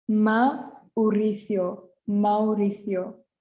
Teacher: So here we have two vowels next to each other. So we are going to pronounce them separately.